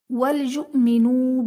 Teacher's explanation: حمزہ ساکنہ ہے، اسے جھٹکا دے کر پڑھیں گے۔ منو میں واو ساکن سے پہلے نون پر پیش، واو مدہ کا قاعدہ جسے ہم ایک الف یعنی 2 حرکات کے برابر کھینچ کر پڑھیں گے۔